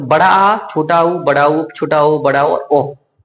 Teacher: पश्च स्वर जिसमें पीछे की जीभ उठती है